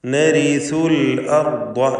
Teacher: നരിസു എന്ന് പറയുമ്പോൾ റായിന് തർക്കീഖാണ്. നേർപ്പിച്ച് റായിനെ ഉച്ചരിക്കുന്നു